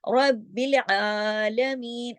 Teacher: आइन जो है वो हलक से पढ़ा जाएगा, हुरूफ हल्की है।